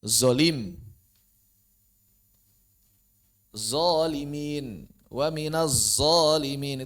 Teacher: Paling sering itu mengubah zo menjadi zai tebal, terutama di Jabodetabek.